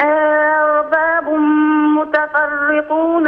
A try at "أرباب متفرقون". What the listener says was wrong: انتبهي للراء المرققة. أرباب متفرقون.